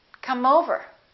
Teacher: the word come the e after the M is silent therefore the M is the last sound and it's a consonant and over is the vowel let's link that